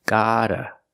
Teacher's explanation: Use the fast D sound, gotta. The first vowel is the open ah sound like hot and stop, gotta. And the second vowel is a short like cup and up, gotta.